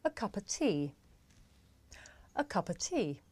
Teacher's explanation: the words a and of become schwa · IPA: ə